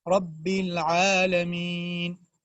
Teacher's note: تو را کے اوپر چونکہ زبر ہے، فتحہ ہے، اسی لیے اس را کو ہم موٹا کر کے پڑھیں گے